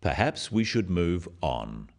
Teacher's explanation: this falling intonation makes it a more definite statement rather than a suggestion · The first one, "perhaps we should move on," is phrased as a suggestion, but it is said in a firm way with a falling intonation at the end.